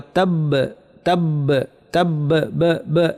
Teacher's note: বায়ের উপর তাসদিদ আছে, মানে 2টা বা, বায়ের শেষে কলকলা হবে। ওয়া তাব তাব তাব ব ব, এটা হচ্ছে কলকলা।